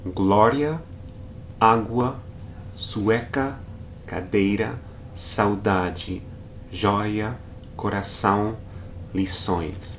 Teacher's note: each case involves 2 consecutive vowels pronounced together in a single syllable. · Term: diphthong